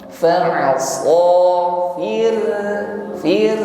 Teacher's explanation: ra bergetar namun tipis